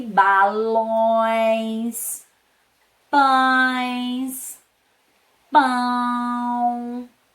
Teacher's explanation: Então, vai trazendo um som nasal, também um sonzinho mais fechado, né?